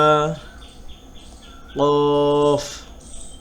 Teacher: কফ হলো গম্ভীরভাবে এবং জিহ্বার গোড়া তার বরাবর উপরে তালুর সঙ্গে লাগাইয়া